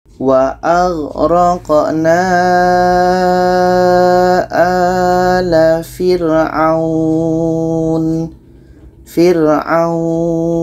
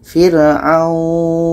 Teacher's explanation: kita panjangkan baru matikan nunnya.